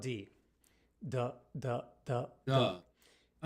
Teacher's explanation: this consonant our vocal cords are engaged thus D is a voiced consonant this actually is the only difference between t and D for